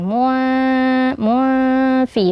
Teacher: tanwin bertemu dengan Fa maka hukumnya adalah ikhfa ya jadi eh tanwinnya disamarkan